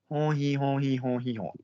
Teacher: Hon hi hon is basically a vowel slide between up and down, and it's pushing on the chest.